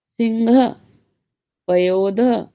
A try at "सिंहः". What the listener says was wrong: घा नहीं है, हाँ है, सिंह। घा कहाँ है? सिंह। हाँ ही बोलना है, हाँ को घा नहीं करना है।